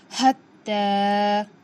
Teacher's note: ता के ऊपर खड़ा ज़बर है, बराबर है हुर्फ मद्दा के, थोड़ा खींच कर पढ़ेंगे, एक अलिफ के बराबर। हत्ता।